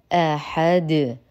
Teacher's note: نحقق الهمزه نرقق الحاء نقف على الدال بالسكون العارض لان العرب لا تقف الا على ساكن وبالتالي يحتاج الى قلقله